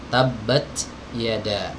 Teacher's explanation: kalau huruf ta ketika disukun malah muncul hams